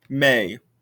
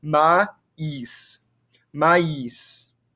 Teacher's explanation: You can hear the A sound and you can hear the I sound, and they're very distinct.